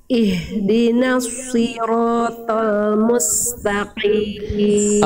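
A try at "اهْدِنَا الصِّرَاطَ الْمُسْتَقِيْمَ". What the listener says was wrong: Oke, huruf tebal, huruf shad di situ ihdinas si, jangan juga jangan monyong. Huruf tebal, huruf shad itu huruf tebal. Jadi Bunda coba lafalkan si jangan pakai monyong. Coba Bunda itu melafalkannya tadi begini. Ihdinas. Nah, kerasa banget, jangan monyong. Bunda coba lafalkan si coba. Si.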